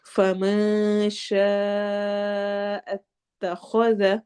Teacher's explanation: فمن میں نون کی آواز کو چھپائیں گے